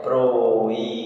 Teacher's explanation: O bi foi mais forte. Paroxítona.